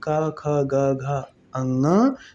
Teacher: क वर्ग यानी क ख ग घ अंग कंठ से।